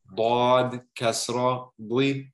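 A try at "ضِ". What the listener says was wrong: Not doy, doy. You have to remove the W altogether. Okay, there's no W in this one. This one is very hard.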